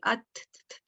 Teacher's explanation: एक मैंने बताया था कि जिसमें नेजल ख्वैशूम था या जौफ था, उसमें कोई पॉइंट 2 नहीं थे, जैसे आप और किसी मगर बाकी में होता है, जैसे अथ कहेंगे अथ, इसमें क्या हुआ, टिप ऑफ द टंग आपकी ऊपर पैलेट पे, ऊपर तालू पे टच हुई, यानी 2 पॉइंट्स मिले तो आपको एक एग्जैक्ट पोजीशन मिल गई।